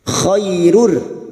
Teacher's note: fathah bertemu Ya Sukun kita lunakkan